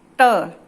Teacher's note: आप देखिए आपकी जीभ जो है वो आपके मुख के बीचों बीच स्पर्श कर रही है, वो होती है मूर्धा। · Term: मूर्धन्य